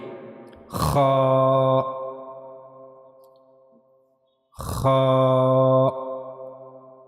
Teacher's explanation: for kha we have to use the upper part of the throat to pronounce kha correctly